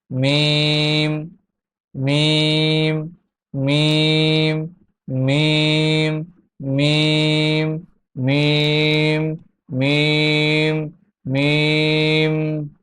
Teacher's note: মিম দুই ঠোঁটের শুকনা জায়গা হইতে উচ্চারিত হয়। ছবিতে দেখা যাচ্ছে মিম উচ্চারণ করার সময় ঠোঁটের কি অবস্থা হয়।